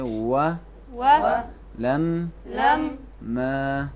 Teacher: زبر کے بعد الف ہے، اسے ضرور کھینچیں گے. اور لام اور واو کے بعد الف نہیں ہے، اسے کبھی نہیں کھینچیں گے، فوراً ادا کریں گے.